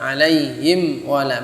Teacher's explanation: Mim dan wawu itu adalah satu makhraj. Sama-sama di dua bibir. Him wala, harusnya him wala, harus jelas, mimnya harus jelas. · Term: mim sukun